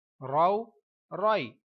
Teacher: رو پر جب زبر یا پیش آتی ہے تو اس پوری موٹی آواز میں ہی یہ پڑھا جاتا ہے